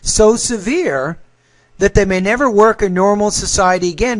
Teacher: when you say so severe you don't want to pause after that you want to pause after severe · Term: thought group